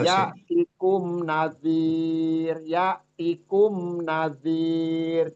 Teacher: Ya'tikum nggak usah ditahan, ya'tikum nadhir itu nggak usah karena di sini dia izhar safawi. Ya, Ya'tikum nazir, cukup jangan ditahan.